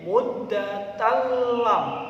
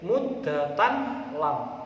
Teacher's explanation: ini ada huruf lam maka membacanya menjadi muddatalam tidak boleh muddatan lam harus dimasukkan pada huruf Berikutnya